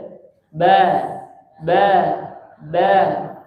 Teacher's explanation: Huruf tipis mah gampang, cuma lidah di bawah dan rahangnya turun dikit, ya.